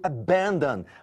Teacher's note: o primeiro, abandon, a sílaba tônica é a segunda, não a última